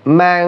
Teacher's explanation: ইকফার হরফ হইলে আমরা নাকের সহিত গুন্না করব